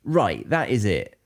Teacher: quick aggressive pretty much stressing each word of that sentence